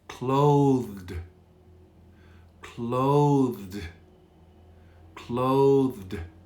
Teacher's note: d is very soft clothed and i'm sometimes not even voiced i'm voicing it so you can practice this combination thd which is really difficult · oftentimes the d is very soft